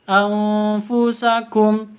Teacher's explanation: Nun sukun bertemu dengan fa. Samar didengungkan karena bacaan ikhfa.